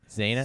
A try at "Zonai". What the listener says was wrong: It's not enough syllables because Adonai. It's 3 syllables.